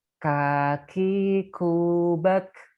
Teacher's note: Nah, kaf ini pangkal lidahnya nempel di yang keras.